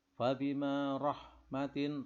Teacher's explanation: ra tafkhim berharkat fathah. Rahmatim, ini tanwin bertemu dengan mim termasuk idgham bihuna, harus dibaca hunna berdengung.